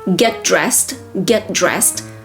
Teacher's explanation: Do not emphasize the T in get because you have another consonant, D, from dressed.